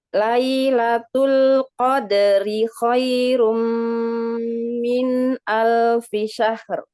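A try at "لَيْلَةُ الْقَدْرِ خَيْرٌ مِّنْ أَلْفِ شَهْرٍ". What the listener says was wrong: Ini syahr atau syahr? Tebal atau tipis? Nah, ya tadi bacanya tipis. Ya, harusnya tebal, bener. Tapi bacanya tipis.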